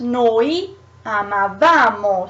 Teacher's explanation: the stress goes a little ahead, so goes on the syllable after. So is io amavo, but then becomes noi amavamo, so it goes a little further.